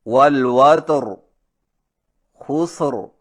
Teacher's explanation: قاعدہ نمبر 3، جو را بوجہ وقف کے ساکن ہو اور اس سے پہلا حرف بھی ساکن ہو تو اس سے پہلے تیسرے حرف پر اگر زبر یا پیش ہو تو را موٹی ہوگی. مثلا والوتر خسر پر وقف کی صورت میں را کو اس طرح موٹا کر کے پڑھیں گے